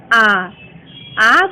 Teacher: आ का उच्चारण करते समय हमारा मुख संपूर्ण खुल जा रहा है, इसलिए यह विवृत स्वर कहलाएगा।